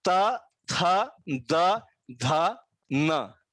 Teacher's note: दांतों के साथ इसका उच्चार होता है, यानी कि जीभ और दांत इन दोनों के बीच में स्पर्श होता है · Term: दंत्य वर्ग